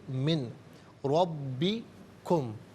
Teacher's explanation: را مشدد ہے، اسے جماؤ کے ساتھ پڑھیں گے، را پر زبر ہے، را کو پر کر کے پڑھا جائے گا۔ · ناظرین نون ساکن کو را کے ساتھ ملائیں گے، را کی آواز کو ادا کیا جائے گا، یہاں یرملون کا قاعدہ اپلائی ہوگا۔